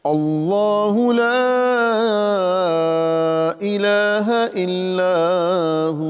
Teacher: लफ्ज़ अल्लाह को हम पुर करके यानी मोटा करके पढ़ेंगे।